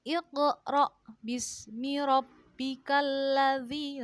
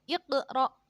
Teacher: jadi pantulannya itu kecil, yaitu qalqalah yang terjadi apabila huruf qalqalah mati asli. Nah, sedangkan bacaannya harus terang dan memantul. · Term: qalqalah sughra